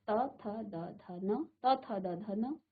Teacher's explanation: अब देखिए आपकी जीभ कहाँ स्पर्श कर रही है, तो आप महसूस करेंगे आपकी जीभ आपके दांत पर स्पर्श कर रही है। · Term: त वर्ग